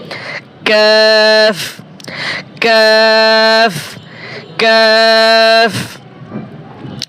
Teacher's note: জিহ্বার গোড়া থেকে একটু আগে বাড়িয়া তার বরাবর উপরের তালুর সঙ্গে লাগাইয়া মধ্যখান পেঁচানো কাফ